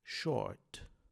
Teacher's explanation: É um O alongado e nós temos também o Rzinho final, que em inglês americano se pronuncia como em short, e em inglês britânico apenas o O.